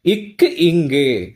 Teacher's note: அன்னத்தோட இது கீழ் அன்னம்னு சொல்லி சொல்லுவாங்களா அன்னத்தின் அடிப்பகுதியை பொருத்துவதால் க்கு இங்கு இந்த நாவு அன்னத்தின் அடிப்பகுதியோடு பொருந்துவதால் க்கு இங்கு அப்படிங்கிற எழுத்துக்கள் பிறக்கின்றன